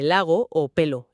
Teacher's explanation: la lengua sí toca en el centro, normalmente arriba, en los alvéolos, para la l, el aire se escapa por los lados, por los laterales de la lengua